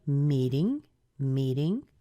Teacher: our stress is on the me and the ding is unstressed but you're hearing the rise so we're already starting to go up right here okay meeting